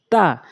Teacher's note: জিহ্বার আগাটা সামনে দুই দাঁতের গোড়াতে লাগাতে হবে